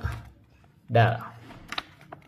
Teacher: Dal pertemuan ujung lidah dengan pangkal gigi seri atas.